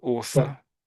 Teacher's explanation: some others, perhaps in East London, would tend to say an F for the TH · So, so in the middle, you're making an F sound.